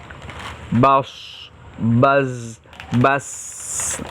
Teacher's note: mengeluarkan huruf dari mulut yang mengerucut seperti siulan. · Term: Sofir